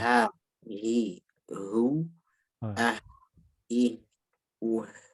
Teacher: mungkin sedikit ditambahin aliran udaranya karena H itu punya sifat hams